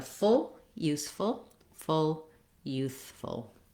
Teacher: really being short and relaxed, having a reduced vowel there